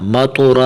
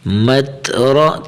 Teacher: میم تا زبر مت، را زبر رو، مت را، مت را، یہاں طا اور تا میں فرق کرنا ہے، طا نہیں پڑھنا ، مطورا نہیں، مت را، تا کی اپنی آواز، مت را،